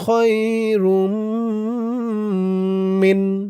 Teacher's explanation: কদরি লাইলাতুল কদরি খয়া জবর খ রমিম দুই পেশরুম ঈদগামে বাগুন্নাহ তানবিনের পরে ইদগামে বাগুন্নার চার হরফের এক হরফ মিম আসছে তাসতিদ সহকারে গুন্না হবে